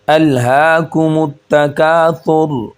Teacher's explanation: اب یہاں پر ہا سینے سے نکلے گا